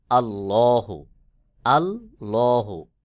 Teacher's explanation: আল্লাহ শব্দের লামকে মোটা করে উচ্চারণ করতে হবে